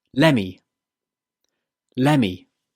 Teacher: This one is a contraction of let me. The t in let is removed and the two words join together to become Lemmy.